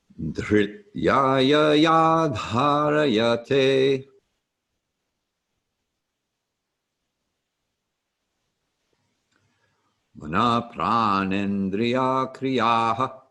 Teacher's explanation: the H is sounded after a consonant. So an H after a T does not combine with the T to make a th sound, as in American Thinglish.